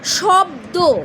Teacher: শব্দ, তালবে সব বয়ে দয়, এই যে ব আর দ দুটো ব্যঞ্জন ধ্বনি একত্রে উচ্চারিত হচ্ছে, এবং দুটোর যে সংযুক্তি অর্থাৎ মিলন ঘটছে, বা দুটো একত্রিত উচ্চারিত মিলিত রূপ, দুটো ভিন্ন ব্যঞ্জন, এবং মাঝে কোনো স্বরধ্বনির উচ্চারণ হচ্ছে না, শব্দ স্পষ্ট, এগুলো হলো যুক্ত ব্যঞ্জন ধ্বনির উদাহরণ।